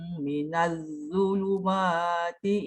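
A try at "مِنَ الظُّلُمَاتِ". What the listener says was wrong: Minal tu tebal sikit. Minal zuluma. Minal zuluma. Ujung lidah keluar.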